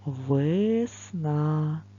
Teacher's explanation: весна наголос падає на букву а